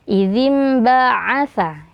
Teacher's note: Idzim ba'atha, huruf ain hati-hati jangan sampai masuk ke hidung ya. Jadi huruf ain itu sama seperti ha, keluarnya dari tengah tenggorokan.